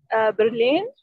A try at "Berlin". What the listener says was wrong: هلا هي مش برلين. In Arabic برلين. In English Berlin. R in English language. دائما يا جماعة خففوها قد ما بتقدروا، منقولش R والR.